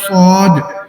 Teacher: سعود میں 2 چیزیں ہیں, یعنی سیٹی تو ہے ہی ہے اور ساتھ اس کو ہم نے موٹا بھی پڑھنا ہے